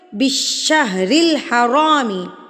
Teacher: را کے نیچے زیر آ گیا ہے، تو یہ را ہم باریک پڑھیں گے۔